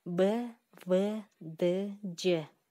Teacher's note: Мында үн менен шыбыш бирдей айтылат. Ошондуктан булар жумшак абалда айтылып жатат. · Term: жумшак үнсүздөр